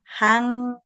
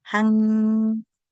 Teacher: a este sonido se le conoce sonido nasal, porque entrecierras, digamos, el sonido oral y sale un poquito de aire, sale por la nariz